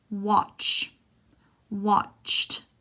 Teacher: it's basically a T and then the SH sound